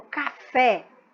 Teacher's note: a sílaba fé torna essa palavra uma palavra oxítona sendo a sua última sílaba a sílaba mais forte